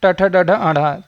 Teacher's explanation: ट ठ ड ढ आढ़ा, यह मूर्धन्य है